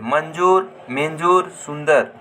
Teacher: वन कर उपरे लागेला इक धवनी उच्चारण नाक से निकले ला अनुस्वार कर उच्चारण आधा न आधा न होवेला